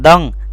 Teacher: دال دو زبر دنگ، اکفا کرنا، دنگ دن نہیں